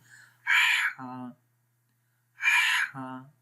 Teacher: ہا کی آواز غور سے سنیں, میڈل آف دی تھروٹ آ رہی ہے, گلے کے درمیان والے حصے سے. ہا ہا ایزیلی پڑھیں گے.